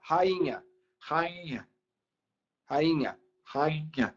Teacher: rainha rainha rainha já é nasal né então por isso que o nh tira o acento porque ele torna o som nasal